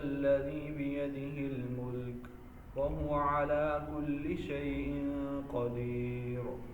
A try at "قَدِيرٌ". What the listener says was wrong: را موٹی نہیں ہے یہاں پہ. جب را ساکن ہو اور را سے پہلے یا ساکن آ جائے، را سے پہلے یا ساکن آ جائے تو را بریک ہی ہوتی ہے. ٹھیک ہے، را بریک ہی ہوتی ہے.